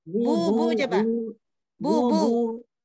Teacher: suara hidungnya itu coba dihilangkan